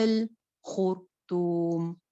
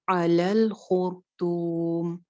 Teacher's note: خوا موٹی، رو بھی موٹی کیونکہ رو ساکن ہے. جب ساکن رو آتی ہے تو ہم نے پڑھا تھا کہ ہم نے اسے پیچھے والی حرکت دیکھنی ہے، اگر پیچھے جو ہے وہ زبریاں پیش ہو تو رو موٹی ہو جاتی ہے.